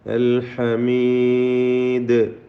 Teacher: ദാലിൽ ഖൽഖല കുബ്ര നൽകി വഖഫ് ചെയ്യുക, വ്യക്തമാക്കി ശബ്ദം ചലിപ്പിച്ച് ഹറക്കത്ത് പോലെ ഉച്ചരിക്കുക